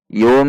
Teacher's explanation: Nun sukun dibaca menjadi mim. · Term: iqlab